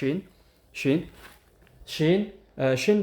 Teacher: ሺን ደግሞ ስታዩት እዚ ጋራ እንደምታዩት ሺን ሺን ሺን ሽን ደሞ የሚወጣው የምላሳችንን መካከሉን ወደላይ ጠጋ እናረገዋለን ግን እንደም ልክ አናረገውም እንደ ጂም ልክ አናረገውም ትንሽ ክፍተት ይኖራል።